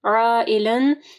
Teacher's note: مد ہے اور اس کے بعد حمزہ ہے، ٹھیک ہے، تو 4 سے 5 انگلیوں کے برابر اس کو لمبا کرنا ہے